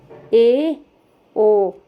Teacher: अर्ध संवृत स्वर है जिसमें मुख द्वार आधा बंद रहता है